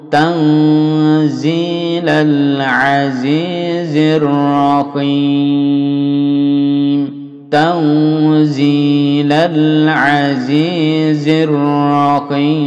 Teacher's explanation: ini إخفاء حقيقي ya. إخفاء حقيقي disamarkan lalu ditahan dua harokat.